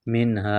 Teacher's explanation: منہا اظہار کریں گے، نون پر غنہ نہیں کریں گے